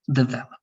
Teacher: the stress is a little bit more like in the middle